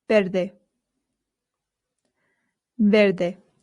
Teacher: I told you that the V in Spain makes a light B sound. Verde. However, in Latin America, it does make more of the English V sound.